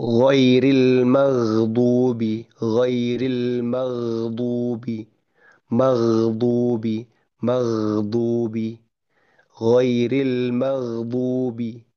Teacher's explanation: pengucapan huruf gain dan juga sifat yang tidak memantul gitya. Sifat yang bukan qolahnya juga huruf untuk huruf gin tentunya untuk ukuran ghain sukun itu yang lebih susah memang daripada huruf ghain yang hidup. · Ukurannya adalah bagaimana ghain itu masih masih keluar suara, masih keluar masih keluar bunyi ghainnya, konsonan ghain itu bahkan ketika sukun, gitu ya, tanpa memantul, tanpa qalqalah